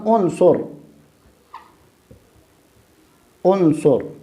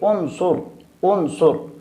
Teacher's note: یہاں چونکہ را کے ماقبل جو صاد ہے اس پر چونکہ پیش آیا ہے لہذا ہم اس را کو موٹا پڑھیں گے